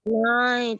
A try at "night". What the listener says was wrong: Night. Well done.